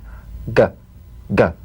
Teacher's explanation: The voiced tongue back plosive consonant G. Place the back of the tongue in gentle contact with the soft palate.